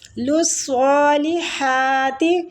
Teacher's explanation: سواد کے اوپر کھڑی زبر ہے تو کھڑی زبر کو بھی ایک الف کھینچ کے پڑھا جاتا ہے